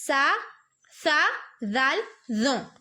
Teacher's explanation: زبان کی نوک اور سامنے کے اوپر والے دونوں دانتوں کی کنارے سے ادا ہوتے ہیں. زبان کی نوک مخرج وہی ہے قریب قریب, لیکن جب ہم تا تو دال ادا کر رہے تھے تو دونوں دانتوں کی جڑ میں لگ رہا تھا, ٹھیک ہے, زبان.